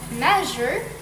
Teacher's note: creating a sh sound as air squeezes through as in measure similar to sh but with vocal chord vibration giving a softer buzzing